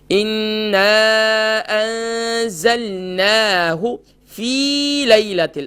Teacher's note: فا کے بعد جو یا ہے یہ یا مدہ ہے، ایک الف کی مقدار کھینچیں گے